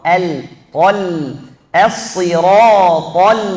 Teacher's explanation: Jangan pindahkan tebalnya dari ta ke huruf lam.